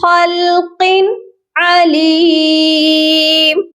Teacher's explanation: یہاں پر بھی ہم نے خلق ایسے غنہ نہیں کرنا بلکہ اس کو پڑھنا ہے خلق علیم۔ اب آپ ایک چیز نوٹ فرما لیجئے کہ میں نے جو ہے یہاں پر نون لکھا ہوا تھا اس کو نہیں پڑھا۔